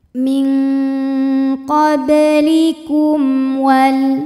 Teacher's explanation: Sebab mim sukun menghadapi huruf selain mim dan ba, di mana hurufnya ini adalah huruf waw. Maka mim sukun dibunyikan masih tetap bunyi asalnya yaitu m dan tidak perlu ditahan. Maka ini dibaca dengan jelas. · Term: idhar syafawi